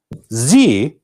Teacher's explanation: However, we're not just blowing air with Z. This is called a voiced sound. We are vibrating. [Music] Same tongue position, but you're vibrating and passing the air.